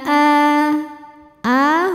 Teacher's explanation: hukumnya mad badal sebab ada Hamzah yang dipanjangkan cara membacanya dipanjangkan a-nya dua harakat